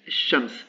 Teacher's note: le lam a complètement disparu · c'est le lam qui a disparu. On ne l'entend plus. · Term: assimilation